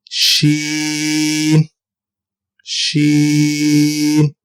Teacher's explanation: زبان کے درمیان اور تالو کے درمیان سے ادا کریں گے ہم شین